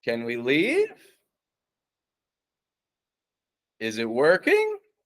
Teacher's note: we kind of start medium in Pitch go down and then sharp rise up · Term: focused pitch placement